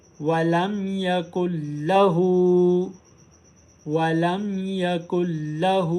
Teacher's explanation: हा के ऊपर उल्टा पेश है, हा को एक अलिफ की मिकदार लंबा करेंगे। याद रखें, तिलावत के दौरान जिस सबक पर उल्टा पेश होता है उस सबक को एक अलिफ की मिकदार लंबा किया जाता है।